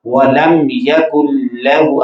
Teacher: اب میم ظاہر ہو رہی، پتہ چل رہا ہے کہ یہ میم ہے اور اس میں کوئی غنہ بھی نہیں ہو رہا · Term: اظہار شفوی